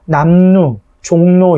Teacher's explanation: 미음, 이응 뒤에 리을이 연결될 때 앞에 있는 건 그대로 비음은 그대로 있고 뒤에 있는 리을이 니은으로 바뀌는 현상이다. 그래서 남루, 종로 이렇게 했을 때 앞에 있는 미음, 이응 뒤에 있는 리을이 연결됐을 때 뒤에 있는 리을이 니은으로 바뀌었다 이렇게 볼 수 있겠죠.